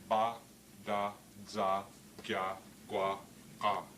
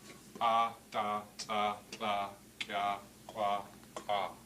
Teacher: And what I've put up here on the board is a set of the what are called the stop consonants, the stop speech sounds of Somalgit. And notice how they're arranged from front of the mouth to the furthest back in the mouth.